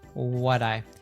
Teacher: there's an American T here that happens because of the T between two vowel sounds between what, and I.